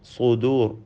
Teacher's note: സ്വാദിന് തഫ്ഖീം നൽകണം. എന്നാൽ മറ്റക്ഷരങ്ങൾക്കൊന്നും തഫ്ഖീം വരാതിരിക്കണം